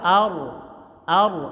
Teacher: ada Ro mati sebelumnya Fatah namanya tafhim tebal